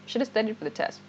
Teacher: you don't make the V sound when you pronounce shouldn't have naturally